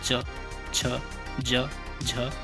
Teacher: दूसरा है तालव्य वर्ण, जिन वर्णों के उच्चारण में जीवा का मध्य भाग तालु से स्पर्श होता है, यानी कि आपके जो जीभ है वो ऊपर की ओर टच होगी जब भी आप इनका उच्चारण करेंगे।